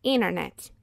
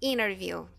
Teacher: Porque existe uma regra no inglês que se vier um T depois de um N, então a gente pode esquecer, não precisamos falar a letra T